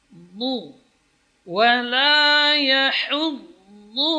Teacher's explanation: huruf dhad di sini dari sisi lidah, ya sisi kiri atau kanan atau kedua-duanya, menempel pada geraham atas, 3 geraham atas setelah dhawahik, yaitu di gigi tawahin al-ulya.